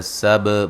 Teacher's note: سب با پہ قلقلہ ہے